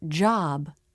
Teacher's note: back the inside of the mouth is dark the word job the jaw drops and the tongue presses down in the back ah when this vowel is in a stressed syllable the voice